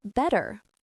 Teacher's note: It doesn't sound like the hard T in table. It becomes softer. It's quicker. It's a flap. Your tongue quickly flaps against the roof of your mouth. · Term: flap T